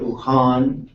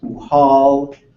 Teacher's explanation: they would often put a voiced L in there, which is a sound that really doesn't exist in Tlingit. So it's a lusk, or instead of uhan, you would hear uhal.